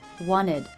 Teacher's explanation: I dropped the T. This is not an uncommon practice when the T follows an N.